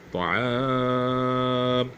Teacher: میم سے پہلے جو الف ہے جو حروف علت میں سے ہے اسے کھینچا جائے گا